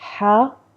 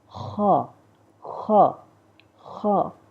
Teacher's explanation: ہا نرمی سے ادا کریں، اور جو ہمارے پاس یہ دوسری خوا ہے اس کو تھوڑا سا سختی سے، تھوڑا سا موٹا ادا کیا جائے. تو مطلب ڈفرینس تھوڑا سا، اتنا بھی نہ ہو کہ خوا لوگ پڑھتے ہیں، خوا اس طرح نہیں، ہا، خا، خا، خا.